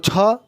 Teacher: जबकि अघोष में आता है छह की अगर बात करें तो छह महाप्राण में भी आता है और अघोष में भी आता है